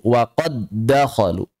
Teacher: Dihapus suara dal pertamanya. Jadi jangan anggap ada dal yang pertamanya. Langsung dal kedua bertasydid. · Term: idgham